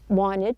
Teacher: there is no T, wanted, and then there is the schwa sound · Now notice that the T sound in the word wanted, the T is dropped. This is not an uncommon practice when the T follows an N.